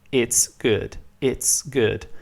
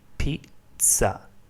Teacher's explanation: In Italian it's pronounced pizza. The sound ts is basically the sound T plus the sound S, and it's very common in English, like the word it's good, it's good.